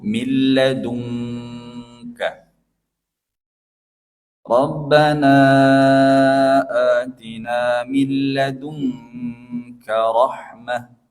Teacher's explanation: karena nun bertemu kaf atau nun bertemu qof itu ikhfanya didengungkan mirip seperti ejaan huruf eng millung ya dua-duanya gitu berbeda dengan huruf ikhfa yang lain.